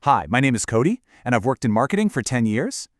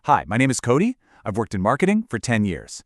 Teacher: That uptalk at the end, it completely kills your credibility. Instead, you drop it one octave lower and make it flat. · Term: flat lower octave